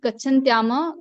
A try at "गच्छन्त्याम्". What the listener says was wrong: देखिए सप्तमी विभक्ति एक वचन गच्छन्त्याम, ठीक है। गच्छन्त्याम ऐसे नहीं, क्योंकि म में हलंत है, म पूरा नहीं है, ठीक है।